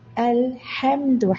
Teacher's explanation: ഹ തൊണ്ടയുടെ മധ്യത്തിൽ നിന്ന് ഉച്ചരിക്കുക. വായ തുറന്നു വെച്ച അവസ്ഥ. ഹ എന്നോ വായിൽ നിന്ന് ഹേ എന്നോ ഉച്ചരിക്കരുത്.